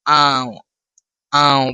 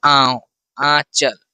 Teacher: नाक का भी इसमें प्रभाव पड़ेगा और मुंह का भी। नाक की सहायता मिलेगी और मुंह से भी सहायता मिलेगी। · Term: अनुनासिक